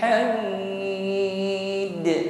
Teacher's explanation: sifatnya Qalqalah dipantulkan ya pantulannya di sini Kubro lebih terdengar jelas karena huruf qalqala yang berada di akhir ayat atau ketika waqaf